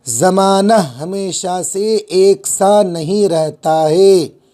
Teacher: نون گنہ آواز ناک میں جائے گی